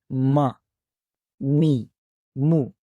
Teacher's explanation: چلیں اب ہم ان کی ساؤنڈز کو پڑھتے ہیں زبر زیر پیش کے ساتھ، اور اس کا مخرج کو دوبارہ ہم اس کو سمرائز کرتے ہیں اپنے ٹاپک کو، کہ میم اور میم کا مخرج کیا ہے کہ دونوں ہونٹوں کو آپس میں ملانے سے حرف میم کی آواز ادا ہوتی ہے